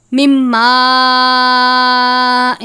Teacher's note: نون ساکن کے بعد میم مشدد ہے. میم مشدد اور نون مشدد پر ہمیشہ غنہ کرتے ہیں. یہاں پر بھی بڑی مد ہے.